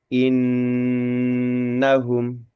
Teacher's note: Maka untuk nun tasdidnya kita bacanya innahum lebih lama ya gitu lebih ditahan lama.